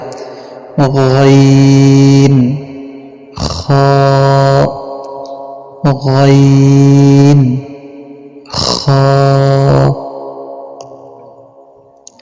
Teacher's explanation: কণ্ঠনালীর শেষ হইতে উচ্চারিত হয়